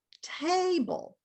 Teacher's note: But if you say table, the first stressed syllable is longer.